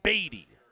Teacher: emphasis on the first syllable batty